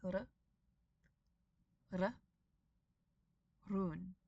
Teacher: this single r is a single tap of the tongue on the roof of your mouth